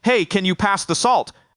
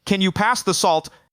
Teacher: I'm going to keep that cadence flat, and if I can drop the tone just a little bit at the bottom to make it sound a lot more firm and a lot more confident.